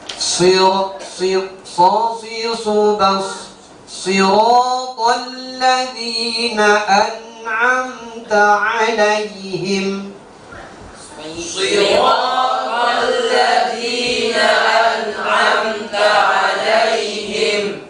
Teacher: Sodnya harus ada angin mengalir, karena dia punya sifat namanya hamas.